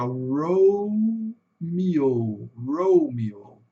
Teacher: O E com som de I e dois Os longos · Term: O longo